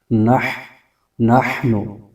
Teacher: اپنے سے پہلے متحرک حرف سے ملا کر پڑھنا ہے، نح، اور حا کی آواز حلق کے درمیانی حصے سے آنی چاہیے